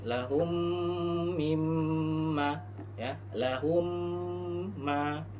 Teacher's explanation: Ketika ada huruf mim sukun bertemu dengan huruf mim hidup, ya, maka hukumnya membacanya apa? Dibaca dengung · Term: idgham mimi